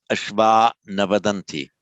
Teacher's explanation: the r before a voiced consonant the r simply drops out